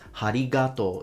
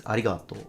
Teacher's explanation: he actually put aspiration. He added ha. He says harigato.